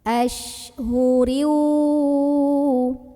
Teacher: tafasyi itu artinya ada sebaran angin didalam mulutnya · Nah, kemudian shinnya ini kita bunyikan salah satu sifatnya yang khas yang tidak ada huruf lain yang memilikinya, yaitu sifat tafashi. Tafashi itu artinya ada sebaran angin di dalam mulut ya. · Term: sifat tafasyi